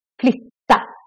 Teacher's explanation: short version of the Y. Because two consonants coming after.